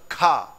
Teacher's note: जैसे ही खा बोला तो हवा निकली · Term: महाप्राण